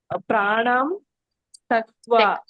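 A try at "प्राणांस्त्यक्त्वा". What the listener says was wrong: ಸ ಕೆ ತವತ್ತಿದೆ ಯ ವತ್ತಿದೆ ಹಾಗಾಗಿ ಇಲ್ಲಿ ತ ಮತ್ತೆ ಯ ಎರಡನ್ನು ಕೂಡ ಉಚ್ಚಾರಣೆ ಬರಬೇಕು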